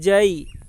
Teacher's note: یا ساکن سے پہلے زبر ہے، اس لیے یا لین ہوگی، یا لین کو نرم آواز کے ساتھ جلدی ادا کریں گے. معروف پڑھیں گے، مجہول آواز سے بچیں گے.